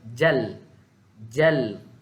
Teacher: hujung lidah akan pergi dekat gusi sebelah atas. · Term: lam mati